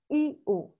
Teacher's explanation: la i y la u son cerradas porque uno Abre la boca pero no tanto